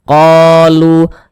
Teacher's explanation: qa dibaca panjang, mad tabi'i panjangnya itu 2 harokat. 1 alif 2 harokat.